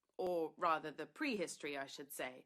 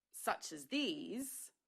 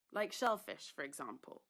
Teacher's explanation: the little utterances that you saw there are given a kind of a lower tone